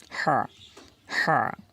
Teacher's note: গলার ভিতরে যাবে আমাদের, অর্থাৎ কণ্ঠনালীর যে মাঝখান, এখানে চাপিয়ে বলতে হবে